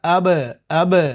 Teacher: جیسے آپ نے قلقلہ پڑھا تھا، قاف تا با جیم دال میں با جو ہے حرف قلقلہ ہے، تو اگر قلقلہ والے حرف یعنی با پر اگر جزم آ جائے تو اس کی آواز کو اوپر اٹھاتے ہیں، یعنی تھوڑا ٹکرا کر اس کی آواز ٹکر کھا کر الگ ہو جاتی ہے۔